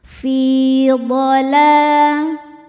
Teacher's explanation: La hukumnya mad tabi'i muqaddar karena ada lam dengan harokat fathah panjang. Cara bacanya panjang 2 harokat.